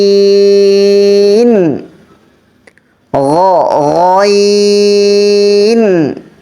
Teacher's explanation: গলার শেষ ভাগ থেকে